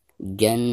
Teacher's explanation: Nun yang bertasydid merupakan salah satu daripada huruf gunah ya, maka cara membacanya itu harus ditekankan disertai dengan gunah ya. Jannat. Adapun ketika membaca naknya ini dipanjangkan 2 harakat ya.